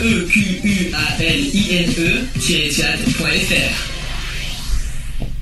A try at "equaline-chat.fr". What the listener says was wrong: Non, il a fait à la française.